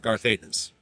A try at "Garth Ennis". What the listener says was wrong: It just sounds like you're saying Darth Ennis.